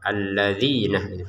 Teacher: Dzi ini panjang dua harakat.